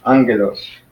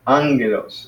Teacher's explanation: So the accent is on the first syllable, angelos. It's not towards the end.